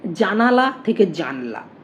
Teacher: ল আ জানালা থেকে জানলা জ আ ন ল আ অর্থাৎ দন্তন্য এবং ল এর মাঝে যে আ ধ্বনিটা ছিল সেটা লোভ পেয়েছে